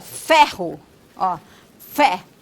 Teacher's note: é uma consoante fricativa labiodental não vozeada